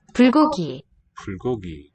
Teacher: written with a B, as the word initial sound, it's going to devoice and have slight aspiration, not the heavy kind.